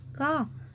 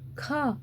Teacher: अल्प प्राण जिसमें वायु मुख से थोड़ी निकलती है, महाप्राण वह है जिसमें हवा मुख से थोड़ी सी ज़्यादा निकलती है। जैसे का अल्प प्राण है, ख महाप्राण है।